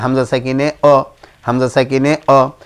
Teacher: হামজা কণ্ঠনালীর শুরু থেকে শক্তভাবে উচ্চারণ করতে হয়